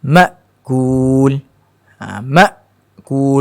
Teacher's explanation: Bila kita sebut ma', kita rasa ma' berada pada pangkal kerongkong, duduk bawah sekali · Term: hamzah